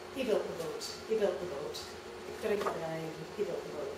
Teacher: he, again, it's a shorter vowel, it de-stresses and procliticizes more easily